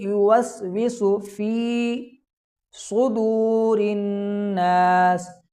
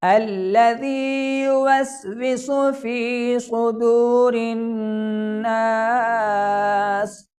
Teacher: صدور کے اندر صاد کو موٹا پڑھا جائے گا کیونکہ یہ بھی حروف مستعلیہ میں شامل ہے۔